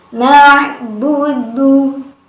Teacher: dengan mengeluarkan makhraj ain itu dari tengah tenggorokan